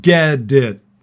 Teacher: the T at the end of get becomes what we call a flat T